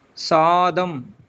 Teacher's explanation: சா நெடில் வருது இல்லைங்களா, அதுக்கு 2 மாத்திரை. தாவுக்கு 1 மாத்திரை, இம்முக்கு அரை மாத்திரை.